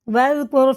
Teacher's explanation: رائے ساکن سے پہلے پیش ہے تو یہ موٹا کر کے پڑھا جائے گا، یعنی منہ بھر کے